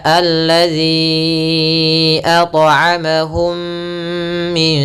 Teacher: mim mati bertemu mim kita namakan dengan am cara melafalkannya yaitu suara mimnya masuk kepada yang kedua dan ditahan mimnya ditahan mnya sepanjang du sampai t harakat sedikit atau dua